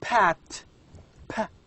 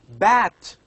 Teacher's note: these are sounds formed using both upper and lower lips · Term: bilabials